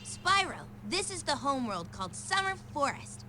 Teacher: that tiny bit of vocal fry it's so good